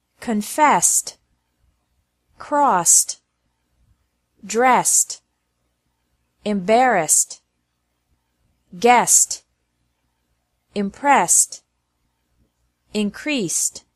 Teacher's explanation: ED is also pronounced like T after verbs ending with an S sound.